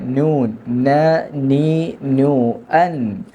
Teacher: നാവിന്റെ തലയും മേലെ മുൻപല്ലുകളുടെ ഊനും · നാവിന്റെ തല മാത്രമേ ഉള്ളൂ നാവിന്റെ തലയുടെ അരുവില്ല നൂൻ എന്ന് ഉച്ചരിക്കുമ്പോൾ ന ആയി പോകാൻ പാടില്ല നു എന്നാവാൻ പാടില്ല നൂൻ